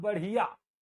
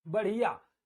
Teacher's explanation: हिया आवाज आएगी लास्ट में, इया नहीं आएगी